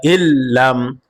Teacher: মিম সাকিন গুন্না হবে না গুন্না ছাড়া স্পষ্ট হবে